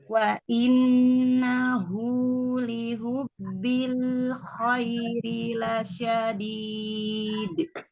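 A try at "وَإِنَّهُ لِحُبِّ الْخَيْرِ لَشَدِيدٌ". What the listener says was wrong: Nah, lagi lihubbi hanya tipiskan lagi. Wa innahu lihubbil khairi lasyadid. Lihubbi. Nah, ini ambilnya dari al-jauf, tidak pada makhrajnya. Lihubbi. Nah, Hanya tampakkan lagi. Hu, hu. Lihubbi.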